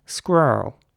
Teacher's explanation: Whereas in American English, it would be more like squirrel. So the R's are very rounded in American English, squirrel. And the E at the end is kind of not pronounced almost.